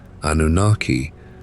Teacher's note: The form that the whole modern world now uses, Anunnaki, with that final long vowel, is the genitive inflection of that Akkadian noun.